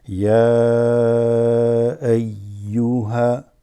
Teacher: So ya, there's the extension of the ya.